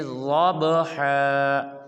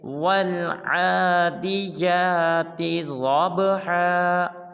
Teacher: ضب کی با کو قلقلہ کریں گے، پڑھیں گے ضبحا